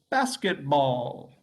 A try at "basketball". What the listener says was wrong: Okay, so you're losing the S. Basketball.